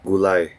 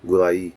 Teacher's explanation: gulay where they're pronounced as a diphthong because they're part of the same root and gulay where ai is said as two different vowels because they're part of different roots. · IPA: /gulai̯/